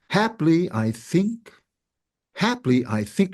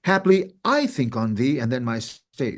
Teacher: you would never emphasize I the pronoun because it's not even on the stress